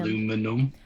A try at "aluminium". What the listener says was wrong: You're forgetting a whole ass syllable there, sir.